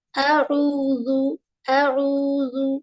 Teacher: 2 حرکت ٹائم دیں گے واو مد کے پاس۔